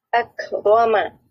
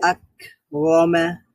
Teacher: এখানে কাফটা হচ্ছে শিদ্দা তাহলে আওয়াজটা বন্ধ হয়ে যাবে আবার যেহেতু এটা হামস এজন্য বন্ধ হয়ে গিয়েও একটু আওয়াজ বের হবে মানে বাতাস বের হবে বাতাস বের হবে আকমা লাম হচ্ছে মুতাওয়াসিতা বাইনা তাহলে এখানে আওয়াজ